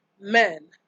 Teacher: We have the bilabial nasals. We have a word like man.